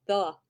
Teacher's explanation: TH is saying a buzzy th sound, but the E is not really saying a sound at all. It's kind of saying an sound, the.